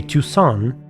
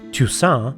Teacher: Sometimes they say Toussaint, where you can clearly hear a bit of an N in the end. Other times it sounds like Toussaint, no signs of N at all.